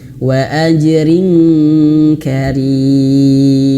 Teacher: kasrah tain berjumpa dengan huruf kaf maka menjadi eng ya